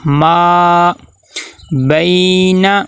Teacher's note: ما بین، اب با کے ساتھ آگے یائے لین آ گئی ہے، تو یائے لین کو نرمی سے پڑھیں گے اور دوسرا معروف پڑھنا ہے، مجہول نہیں پڑھنا